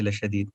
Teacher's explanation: دال میں کلکلا کریں گے لشدیدن ہے لیکن وقف کی وجہ سے لشدید پڑھیں گے